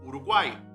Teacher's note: uma semivogal uma vogal e uma semivogal